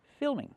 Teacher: Use the I sound like this is. Fi, fi. Plus the dark L, fill, filming.